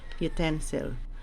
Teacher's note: it is stressed on the second syllable utensil okay so it's ipa symbol for the short u sound